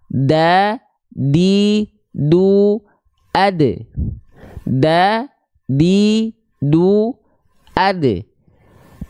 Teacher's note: ujung lidah disentuhkan ke mana ke Pangkal gigi Sari atas sama seperti Huruf ta · ujung lidah kita kita sentuhkan ke Pangkal gigi serari atas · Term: huruf Dal